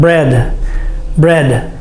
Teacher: your tongue must touch the top of your mouth with the final D sound